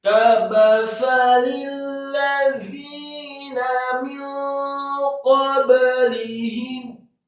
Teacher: huruf dha yang tipis, lidahnya agak keluar sedikit, kasroh dua harokat karena setelahnya ada ya sukun. Kemudian nunnya dibaca fathah, cukup satu harokat.